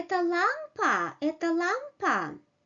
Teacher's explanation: But when we get surprised, when we want to question something, when we want to build a question, we pronounce this question with the rising intonation, and we may say это лампа, это лампа.